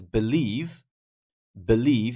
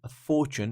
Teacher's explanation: believe is on the second syllable Fortune is on the first syllable